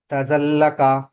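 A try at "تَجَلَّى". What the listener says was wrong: జీమ్ correct గా రావాలి. తజల్లా.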